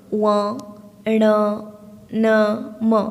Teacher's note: ନାସିକା ଧ୍ୱନିରେ ୱ, ଣ, ନ, ମ ଏସବୁ ଆପଣଙ୍କର ନାସିକାର ରାସ୍ତା ଦେଇ ଆସୁଥିବାରୁ ଏ ହେଉଛି ନାସିକା ଧ୍ୱନି